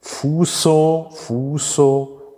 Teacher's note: die Spindel fuso, fuso mit stimmlosem S